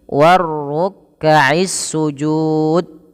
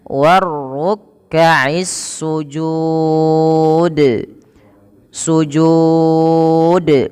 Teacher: Kenapa salah? Karena dia tidak memantulkan huruf dal. Padahal huruf dalnya ada pantulannya, yaitu bacaan qalqalah